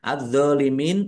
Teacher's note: alif lam syamsiyah karena tidak dibaca langsung masuk ke huruf berikutnya yaitu dandai dnya ada tasdidnya dnya dibaca dobel.